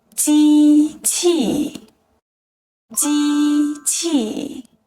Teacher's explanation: is pronounced with the first and fourth tones